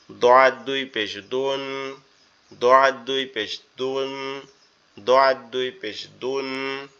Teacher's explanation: এরপরে দোয়াদ, দোয়াদটা আমাদের জিহ্বার গোড়া, ডান পাশের উপরের মাড়ির সাথে লাগবে